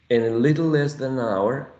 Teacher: Hour carries the tonic stress